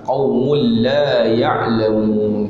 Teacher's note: tanwin bertemu dengan lam idgham bila gunnah, tidak ada dengung